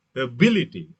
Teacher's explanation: the stress shifts to second syllable